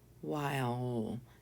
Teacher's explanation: And we go straight from the I to the l.